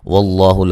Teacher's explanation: لفظ اللہ کو موٹا ادا کریں گے، اس سے پہلے زبر ہے